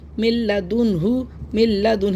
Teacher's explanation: तो यहां पे इगाम बिला गुना होता है। यानी कि बगैर गुने के मिला के पढ़ते हैं। मिलाते तो हैं लेकिन गुना नहीं करते। · کیسے پڑھیں گے، میم نون لام زیر مل، دیکھا آپ نے نون کو ہم نے نہیں پڑھا، لام کی آواز آئے گی صرف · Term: बगैर गुने के मिलाना, ادغام بلا غنہ